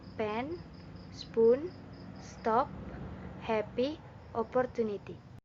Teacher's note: P is consonantal anterior voiceless bilabial stop.